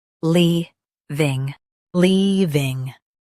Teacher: Stress lea and keep ving smooth.